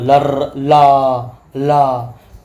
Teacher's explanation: जब जीभ के पार्श्व भाग में साइड से थोड़ी हवा निकलती है, इसलिए उसे पार्श्विक व्यंजन कहते हैं।